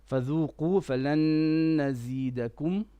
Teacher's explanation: Try to do a bit more غنى on the noon.